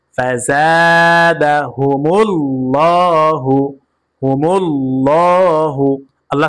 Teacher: আল্লাহ শুধু লামকে পুর করে পড়েছি এবং লামকে একালিফ পরিমাণ টেনে পড়েছি।